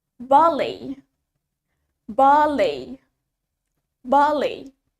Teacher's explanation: In British English, the stress is in the first syllable.